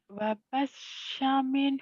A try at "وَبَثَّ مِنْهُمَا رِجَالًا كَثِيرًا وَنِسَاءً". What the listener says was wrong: wabasya biasa aja. Cedal ya wabasa. Basa. Sa. Lidahnya kayak digigit cadal. وَبَثَّ مِنْهُمَا رِجَالًا كَثِيرًا وَنِسَاءً.